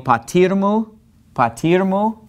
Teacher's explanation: we put our accent on patir, and we basically pronounce this as if it were one word. So to say, and my father, we say, ke o patirmu, patirmu, okay?